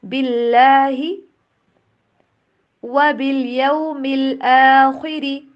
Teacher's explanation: یہ عربی کا ایک رول ہوتا ہے کہ جس بھی حرف کے اوپر کوئی علامت نہیں نا ہوتی اس کی کوئی آواز نہیں ہوتی، یعنی کہ نو سائن نو ساؤنڈ، ٹھیک۔ تو با کو ڈائریکٹلی ہم اللہ کے نام کے لام کے ساتھ ملائیں گے